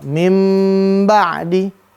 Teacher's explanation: Maka bunyi n di nun sukun atau an in un diubah menjadi bunyi mim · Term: iqlab